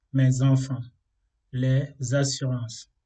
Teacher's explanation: le S est utilisé pour faire la liaison et le S se prononce comme un Z